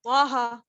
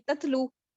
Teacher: طٰہٰ موٹا پڑھا نا میں نے. اور اگر تے سے میں نے کچھ پڑھا تو وہ میں باریک پڑھوں گی. تتلو باریک پڑھا میں نے.